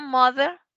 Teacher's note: si yo digo mother, es TH, pero tiene un sonido como de una D